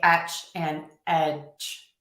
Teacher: some people say etch and edge, where their voice kind of shuts off at the end